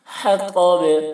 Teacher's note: تو کی آواز موٹی ہو رہی ہے اور با میں قلقلہ ہو رہا ہے